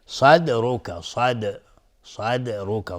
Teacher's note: صاد از حروف استعلاء است. دال اینجا قلقله میخواد و را هم حکمش استعلاء چون ضمه داره